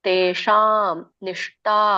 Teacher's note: ತೇಶಾಂ ಸ್ವಲ್ಪ ರೋಲ್ ಮಾಡಬೇಕು ನಮ್ಮ ನಾಲಿಗೆನ ಅಂಗಳಕ್ಕೆ ಹಚ್ಚಬೇಕು